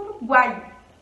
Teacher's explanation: O I desce, então o I também é semivogal.